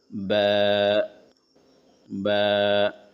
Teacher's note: دونوں ہونٹوں کو بند کرے پھر ہلکا سا کھولتے ہوئے با ادا ہوتے ہیں